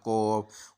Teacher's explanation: अक्सर काफ को जो है ना वो मोटा कर जाते हैं, मोटा करते हुए इसको थोड़ा सा गोल कर जाते हैं, तो कौफ की तरफ ले जाते हैं, कौफ, और ये मुंह से पढ़ देते हैं।